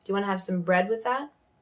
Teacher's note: The most important word being bread in that instance.